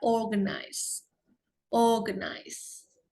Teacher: R-nya tidak perlu terlihat jelas sekali ya, organize.